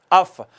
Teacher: ऊपर वाले दोनों दांतों का किनारा मिलता है सनाया उलिया का। कहाँ? नीचे वाले होंठ के दरमियान वाले हिस्से से। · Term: फ़ा का मखरज